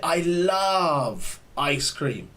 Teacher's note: notice there i extend the sound of love right we usually extend it we say i love ice cream just to emphasize to give